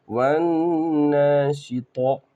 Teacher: واو نون زبر ون، یہاں پر ایک غلطی ہوتی ہے، لوگ پڑھ نہیں پاتے، واو کو ڈائریکٹ نون سے ملانا ہے، الف اور لام یہاں پر خالی ہے، ان کو نہیں پڑھنا ہے۔